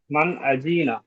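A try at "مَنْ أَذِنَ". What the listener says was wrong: আজি টান হয়ে যাচ্ছে। মান আজিনা।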